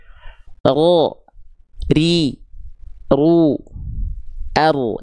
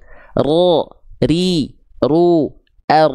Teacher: dia bergetar tapi tidak terlampau banyak getarannya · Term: huruf ro